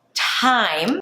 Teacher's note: the T at the beginning of a word, like in the word time, has a little H after, right? Think like you're adding an H, like you're whispering.